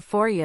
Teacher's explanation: This is called assimilation. Then, for you reduces to for ya because it's quicker to say